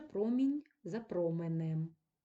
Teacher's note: писатися буква і Промінь а тут відкритий склад за променем тому у відкритому складі звук і змінюється на звук е